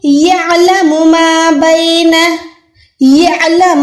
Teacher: عین کو بھی حلق کے درمیان سے نکالنا ہے, با یا زبر بے ہے, ٹھیک ہے.